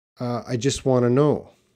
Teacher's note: want to is going to be reduced to wanna.